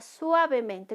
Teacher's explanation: La mayor intensidad está en sua.